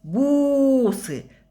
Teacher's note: Падает ударение на гласную У.